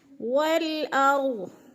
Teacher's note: वल अर्ज़, रॉ को पुर करके पढ़ना है, इसलिए कि रॉ से पहले अलिफ के ऊपर ज़बर है तो रॉ पुर पढ़ा जाएगा और गौद भी पुर पढ़ा जाएगा। वल अर्ज़, वक़फ़ की सूरत में गौद को साकिन कर देंगे, गौद के नीचे ज़ेर नहीं पढ़ेंगे